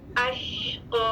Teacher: قاف کے لیے بھی ہونٹ آگے نہ آئے, شین کے لیے ہونٹ آگے نہ آئے, اور قاف کے لیے ہونٹ آگے نہ آئے, اور وقفن 2 کاؤنٹس لمبی مد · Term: شین ساکن